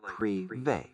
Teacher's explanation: It's more like privé with the Y sound at the end. The E has a long A sound, like in say.